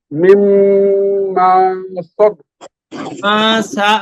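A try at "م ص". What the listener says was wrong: মা টান হলো, টান ছাড়া।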